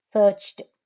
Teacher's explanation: Search is ch, and the past tense is formed by adding t sound. Searched. Spelling is ed only, but the sound is t.